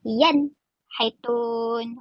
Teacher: Yaitun itu dah dengung dah. Dan bunyi nun mati tu pun dah hilang. Dah tidak jelas. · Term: izhar